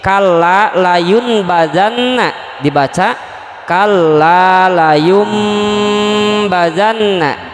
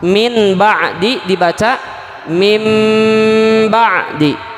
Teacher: Apabila nun bersukun atau tanwin bertemu dengan huruf ba, maka keduanya ditukar dengan bunyi huruf mim, tetapi hanya dalam bentuk suara, tidak dalam bentuk tulisan. Jadi kalau ada nun mati atau tanwin bertemu dengan huruf ba, maka bunyi nun mati atau tanwinnya berganti menjadi huruf mim dalam bacaannya, dalam suaranya, tidak dalam tulisannya. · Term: iklab